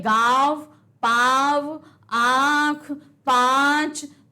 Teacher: हम मुंह से भी बोल रहे हैं नाक से भी बोल रहे हैं इसलिए अनुनासिक कहते हैं